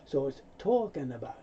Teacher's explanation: Often the G sound is not made, so the N moves over.